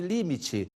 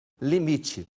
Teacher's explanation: É uma transposição de uma sílaba tônica que se adianta, deixa de ser proparoxítona para ser paroxítona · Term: diástole